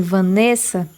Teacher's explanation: Quando eu chamo meu nome, podemos perceber que o NE é o que mais se prolonga no chamamento. Então, a gente sabe que ela é uma paroxítona.